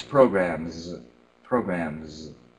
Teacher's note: that z sound because it's next to a voiced M